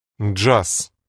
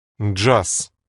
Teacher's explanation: Did you hear that devoicing? The Z comes at the end of the word, and so it dwindles or reduces to an S sound.